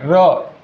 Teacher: र या वर्णाचा उच्चार करताना कंपन होते. कंपन म्हणजे थरथरणे, र लक्षात घ्या. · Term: कंपित वर्ण